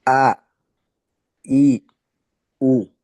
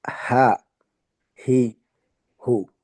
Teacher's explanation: এখানে সিফাতের কারণে একটা যেহেতু বাতাস বের হবে, একটাতে বাতাস বের হবে না, সেই হিসাবে হামজা বের হবে একটু নিচ থেকে, আর হাটা একটু উপর থেকে।